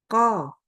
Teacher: lidahnya itu merapat sekali kepada langit-langit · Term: huruf qaf